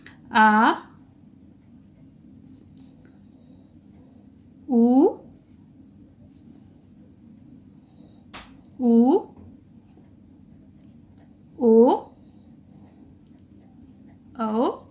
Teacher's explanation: इन स्वरों का उच्चारण आप करके देखिए तो हमारा जो जीभ का पिछला वाला भाग है वो कार्य करता है। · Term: पश्च स्वर